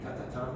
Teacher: this is alveolar sound, alveolar, because the tongue touches the alveolar ridge